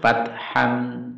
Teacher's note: Taknya ada desis sedikit.